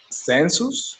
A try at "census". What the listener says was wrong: Census, yep, just pronunciation. Census. The U is a little bit more open. Census. It's like it's an A, not a U.